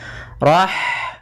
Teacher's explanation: hak mempunyai sifat yaitu sifat hamas, maka alirkan nafas kita.